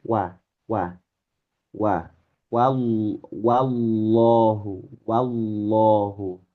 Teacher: Ingat ya, wa fathah. Wa fathah itu masih tipis